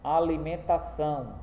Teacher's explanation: Alimentação está acentuada na última sílaba e por isso ela será uma palavra oxítona.